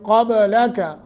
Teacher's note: قاف کو موٹا، با پہ قلقلہ کرنا ہے چونکہ ساکن ہے